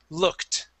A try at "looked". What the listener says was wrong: So if it ends with a K, The word is, the ED ending sounds like a T. The word is looked. Okay, so instead of saying look it, we go right to a T sound. Looked. Looked.